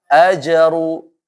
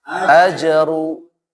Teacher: Jimnya nggak tebal, maksudnya dia mantul, rohnya tebal.